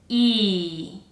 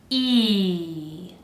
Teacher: I need the sound to be a little longer than you would have the E sound in Spanish. So we're gonna stretch it out.